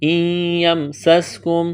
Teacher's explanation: سین میں سیٹی کی آواز پیدا کریں گے